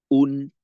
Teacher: অংশ একটা হলো হামজা পেশ উ আরেকটা হলো নুনে জজম তো হামজা পেশ উ বলার সময় আমাদের ঠোঁটটা গোল হবে বাকি নুনের জজম যে অংশটা আছে ওইটার সময় আমাদের ঠোঁট খুলে দিতে হবে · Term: পেশের তানভীনের